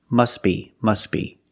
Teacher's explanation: the t is silent because it's between consonants when you link the words · Link the sounds, s, with a b, s, b, together, must be, must be.